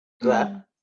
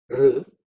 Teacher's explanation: In ra, you touch the palate and then you release. Okay, but in r, the tongue does not touch the palate.